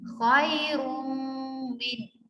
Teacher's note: मीम मुशद्दद पर गुन्ना होगा